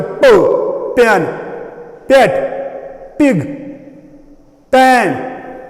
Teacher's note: Po is plosive. When we produce the sound po, the two lips come in touch with each other. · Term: bilabial